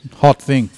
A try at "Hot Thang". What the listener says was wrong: It's not Hot Thing, it's Hot Thang. you've got to get the pronunciation right. Hot Thang. Thang.